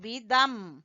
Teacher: कसरा तईन जो है दो जेर जो है ये खत्म हो जाएंगी जब हम वक्फ करेंगे